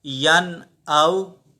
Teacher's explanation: یہاں واو جو ہے یہ حروف لین ہے، اسے نرمی کے ساتھ پڑھیں گے بغیر کھینچے. · کیونکہ نون ساکن ہے اور نون ساکن کے بعد حمزہ ہے، اور حمزہ حروف حلقی میں سے ہے، تو یہاں پر ہم غنہ نہیں کریں گے، نون ساکن کو چھپائیں گے نہیں، نون ساکن کی آواز ناک میں نہیں لے کر جائیں گے، بلکہ ہم ظاہر کریں گے، اسے اظہار کریں گے.